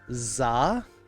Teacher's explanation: Unless you're talking about like a movie title, in which case you use the word za in place of the, because there's no th sound in Japanese, so they went with the closest thing they had, which was za